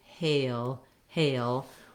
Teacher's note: before my dark l i have a little bit of a schwa sound like a hail when i move from the a to the